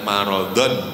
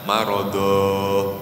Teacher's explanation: Ini kan aslinya marodon, pendek. Tapi kalau dibaca wakof berubah menjadi mat, marodo. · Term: mat iwat